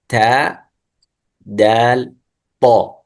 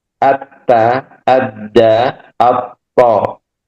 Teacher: الطاء والدال والتاء تخرج من طرف اللسان مع أصول الثنايا العليا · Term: مخرج الطاء والدال والتاء